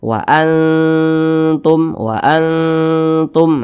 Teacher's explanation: dengan huruf ta itu dia dekatan Nah maka cara membunyikannya Itu bunyi samarnya itu lebih dominan daripada bunyi dengungnya jadi lebih condong berbunyi n tapi disamarkan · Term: ikhfa Hakiki aqrab